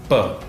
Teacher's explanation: the sound comes from the junction of the lips